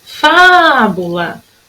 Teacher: A sílaba que durou mais foi o fá. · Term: sílaba tônica